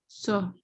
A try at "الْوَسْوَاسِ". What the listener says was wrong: نہیں, اور سین آپ نے ابھی بھی کلیئر نہیں پڑھا. وسواسل. ٹھیک ہے, یہ آپ کا ہے کہ لام کو جما کے پڑھنا ہے, سین کو جما کے سمجھے پڑھنا ہے.